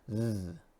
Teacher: Now this TH is different because this TH is voiced